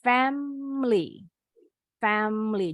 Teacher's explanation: Jadi huruf I yang di tengah nih hilang, nggak bunyi. · even though this word has 3 syllables, but when speaking, the native English speakers pronounce it with only 2 syllables